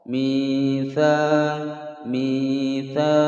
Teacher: panjang dua ketukan tha alif sebelumnya fathah mad tabi'i